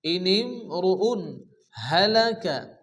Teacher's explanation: রুউন তানবিনের পরে ইজহারে হালকি 6টি অক্ষরের মধ্যে হা আসে, এখানে বিনা গুণা তাড়াতাড়ি পড়তে হবে, কোনো গুণা হবে না।